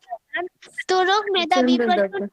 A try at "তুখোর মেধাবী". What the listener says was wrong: তুরুক মেধাবী বলছেন তুখুর মেধাবী।